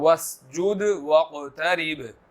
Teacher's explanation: واقترب قاف یہاں پر موٹا ہے اور با جو ہے وہ حروف کلکلہ میں سے ہے